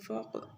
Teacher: قاف کو موٹا پڑھیں گے کلکلا بھی کریں گے